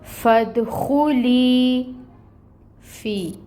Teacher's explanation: یا ساکن سے پہلے فا کے نیچے زیر کی حرکت، یہاں پر بھی یا مد ہو رہی ہے، اس کو بھی 2 کاؤنٹس لمبا پڑھیں گے، اور فا میں ہمس ہوتی ہے، ہمس لے کے آئیں گے۔